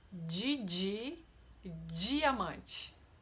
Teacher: Em algumas regiões, o som do d com o i vai ter som de dj